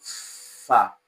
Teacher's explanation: the sound f which is voiceless fricative that's a fricative because the release of air is gradual